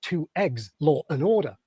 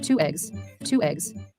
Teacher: a glottal stop which gives two eggs Law and Order